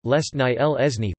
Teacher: dental stops are dropped between a dental continuant and a dental nasal or lateral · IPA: [ˈlʲesnɨj]